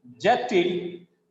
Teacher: Department objected, here it is a verb. Second syllable is stressed.